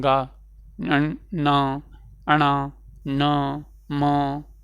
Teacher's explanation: जब आप उच्चारण करेंगे तो वायु जो है या ध्वनि जो है नाक से निकलेगी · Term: नासिक्य व्यंजन